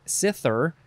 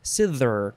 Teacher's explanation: you could do it cither with a light th, or cither with a strong th